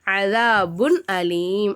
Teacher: இல்ஹாரு உடைய சட்டம் என்னமா வெளிப்படுத்தி உச்சரிக்கணும் தன்வினையும் நுனை சாக்கினையும்